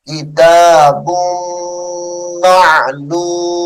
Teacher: ولها کتاب معلوم کتاب بادو پیش میم بم میم زبر ما یہاں پہ غنہ ہوگا یعنی با کو میم کے ساتھ ملائیں گے